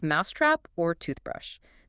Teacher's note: with approximately equal stress on both syllables · The acoustic energy is distributed across both syllables almost evenly.